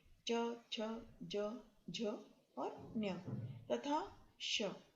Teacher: ये जो है वर्ण ये तालव्य वर्ण है, यानी इनका उच्चारण तालु से होता है।